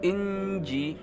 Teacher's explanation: Wa atainahul inji, nun mati bertemu jim, hukum bacaannya adalah ihfa hakiki, ada jim, ihfa hakiki. Baik, karena dia ihfa hakiki, samar-samar caranya dibaca inji